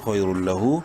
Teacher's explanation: تنوین کے بعد لام حروف یرملون میں سے ہے، ادغام بلا غنہ ہوگا، یعنی ادغام تام جسے کہتے ہیں۔ · لام زبر لا، خیر اللہ، الٹا پیش ہو، ہا کو ایک برابر لمبا کریں گے، الٹا پیش کی وجہ سے خیر اللہ، اور وقت کی صورت میں خیر اللہ ہو جائے گا۔